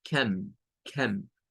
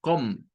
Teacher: Bueno, la C, la O y la M nos forman una sílaba, pero miren qué curioso. Esa O se pronuncia con un schwa. La C toma el sonido de una K. Entonces es algo como cam, cam.